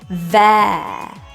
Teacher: That vowel is fully pronounced as an eh